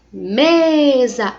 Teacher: o me está sendo considerada a sílaba mais forte